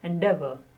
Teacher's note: The stress on de.